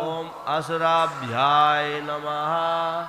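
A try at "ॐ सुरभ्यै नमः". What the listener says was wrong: It is not Om Asurabhyay, it is Om Surabhyay. Om Surabhyay Namaha.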